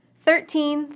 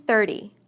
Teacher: We stress teens on the second syllable and tens on the first. The T in the teen number sounds like T, but the T in the tens sounds more like D.